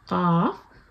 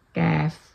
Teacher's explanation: اس پر زبان آپ کے اوپر نرم والے پورشن پر لگتی ہے جو سافٹ پیلٹ ہے، اور جو کیف ہے گا وہ جو ادا ہوتا ہے وہ آپ کے ہارڈ والے پیلٹ پر لگتی ہے آپ کی زبان، تو وہاں سے ادا ہوتا ہے کیف. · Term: ڈاٹ والا قاف